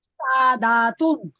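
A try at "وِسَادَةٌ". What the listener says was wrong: দা তো টান নেই, ভিসা দাতুন।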